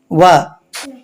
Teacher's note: దంతము ఓష్ట్యము అనగా పెదవు నుంచి పుట్టేటటువంటి అక్షరం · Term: దంతోష్యం